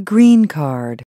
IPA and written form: grin kɑrd (green card)